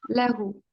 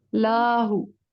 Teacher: لا کو لمبا نہیں کھینچیں گے